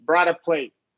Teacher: you know we can flap that t